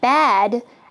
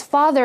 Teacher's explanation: in the word bad, a is a little more frontal, the a sound, versus father, it's a little deeper. So both of these sounds correspond with this letter alif.